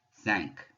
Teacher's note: So that IN in the middle is going to be nasal, coming out of my nose again. And that Q is going to be one of the few times we are going to pronounce at the end of the word. So you do hear that K sound.